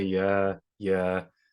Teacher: if I was speaking and you were giving me feedback you might say yeah yeah shorter duration lower intensity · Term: back Channel, freestanding back Channel yeah